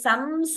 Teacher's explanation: the anusara is pronounced completely